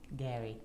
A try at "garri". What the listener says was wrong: No. You have to open your mouth and speak. You are closing the mouth.